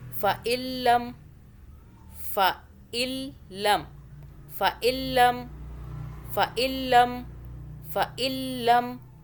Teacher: لام کی 2 مرتبہ آواز تشدید کی وجہ سے